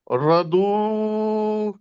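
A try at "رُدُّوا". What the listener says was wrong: جی تھوڑا لمبا ہو گیا ہے. رو نہیں رو کو موٹا نہیں نا کیا. رو ردو ردو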